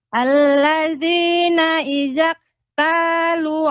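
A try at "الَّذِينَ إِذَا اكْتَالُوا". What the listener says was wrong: Pertama, kaf yang sukun. Ini sifatnya hamas. Adanya aliran udara. Terbukanya pita suara. Ya, alladzina idza ktalu. Alladzina idza ktalu. Kemudian alan lu-nya tadi kurang sedikit. Idza ktalu. Idza ktalu. Dua harokat dengan cara ditekan.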